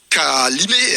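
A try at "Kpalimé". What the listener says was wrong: Pas Limé. Limé, ça s'écrit K et P. Pas Limé. Et pour plus de précision, il y a des gens qui disent pas Limé en enlevant le K, mais c'est pas Limé.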